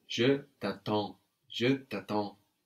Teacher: the first A is just a normal A, no? But then we have the EN giving us that on sound.